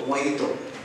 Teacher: The letter J, which sounds like H here, as it is a Spanish word.